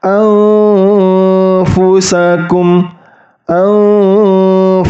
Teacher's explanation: ujung gigi seri atasnya itu hanya mendekati bibir bawah